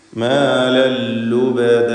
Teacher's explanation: മാലൻ എന്ന തൻവീനിനെ പൂർണ്ണമായും ലാമിലേക്ക് ലയിപ്പിച്ച് മാലല്ലുബദ എന്ന് ചൊല്ലുക. ഇവിടെ നൂനും തൻവീനും അല്പം പോലും കേൾക്കുന്നില്ല എന്നതാണ് ഇതിൻ്റെ കാര്യം.